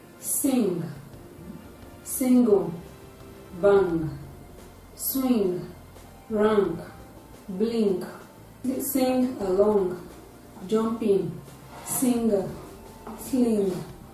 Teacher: The sound is produced when the velum is lowered to allow free flow of air through the nasal cavity. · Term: voiced velar nasal sound